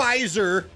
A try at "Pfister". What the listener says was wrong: No, it's just how it's pronounced. When you put the ST in there, it's Pfister. Pfister Hotel, not the Pfister Hotel.